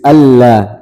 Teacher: di azan biasanya ashadu alla itu tipis tapi ditebalkan